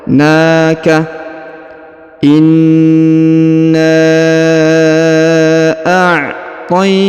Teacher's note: huruf na dipanjangkan 2 harokat karena di atasnya terdapat tanda alif kecil yang merupakan tanda panjang bacaan 2 harokat ya.